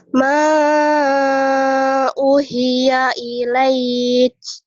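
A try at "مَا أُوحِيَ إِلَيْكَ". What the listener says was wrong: Mana maknya? Ma panjang dulu. Ma panjang u-nya. Ma uhiya ilaik. Tadi salah, kurang bagus.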